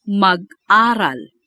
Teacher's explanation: The hyphen denotes a glottal stop after mag.